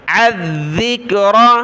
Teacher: ذال پر زبان نکالنی ہے اور اس کو سختی کے ساتھ بھی پڑھنا ہے